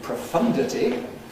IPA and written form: prəˈfʌndəti (profundity)